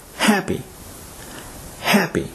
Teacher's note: the adjective happy is stressed on the first syllable